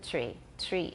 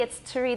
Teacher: syllable articulate articulate tree tree it's not really tree it's turi there's a very short schwa